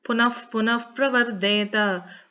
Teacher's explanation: Similarly, after the Punaha we are saying. So after the Visargam, since we have Pakaram, the Visargam should be pronounced as Fakar with the if sound.